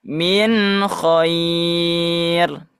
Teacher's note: nun sukun bertemu dengan kha, dijelaskan dan juga gunanya tidak terlalu sempurna